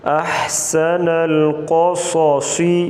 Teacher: زبر صو، احسن القصو، صاد زیر سی، یہ دو آخر میں دو صاد ہیں، ان کو بھی موٹا پڑھیں گے اور قاف کو بھی موٹا پڑھا جائے گا